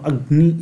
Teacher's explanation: जब हम अग्नि इस तरीके से बोलेंगे तो इस ग में, इस गकार में, इस नकार जो कि नासिक्य है, इसके कारण एक हल्का सा नासिक्यत्व आ जाता है